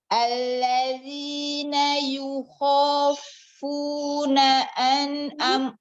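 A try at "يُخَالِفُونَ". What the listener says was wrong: Coba lihat lagi, bukan yukhafu, ada ini tengah-tengahnya.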